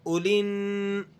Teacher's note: بیچ میں سے الف اور لام ان دونوں کو آپ نے گرا دینا ہے۔ اولن، نون کو پھر آگے عین سے ملائیں گے۔